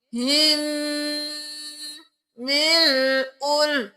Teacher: यहाँ पर हम इस हा को इस मीम के साथ मिलाएंगे और गुन्ना भी करेंगे